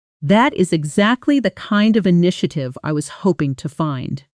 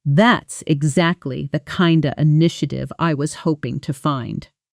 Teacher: In fast speech, kind of almost always compresses into kinda